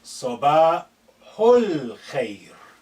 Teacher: Note this al khair, because this alif is not at the beginning, is been suppressed in terms of pronunciation. It's silent, it's not said. Sabahu, this hu is the nearest to the sukun on the lam.